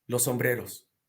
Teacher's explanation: Cuando entiendes lo que es una sinalefa, te das cuenta que cuando dos consonantes sordas, vibrantes, fricativas, se juntan, una al final y otra al principio, y son consonantes homófonas, ¿no? Estas dos consonantes homófonas se vuelven uno